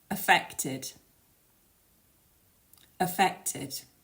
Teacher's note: these words have both have stress on the second syllable so you need to make that one a bit longer and a bit louder and the final syllable which has that Ed spelling is pronounced · you have tid at the end as a final syllable so the first syllable in both cases is weak you make it quieter and shorter